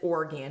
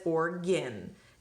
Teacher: that a is flexing to the schwa